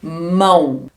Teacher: Neste caso, o O é semivogal. Mão escreve com O, mas a letra, o som desse O aqui é um som de U.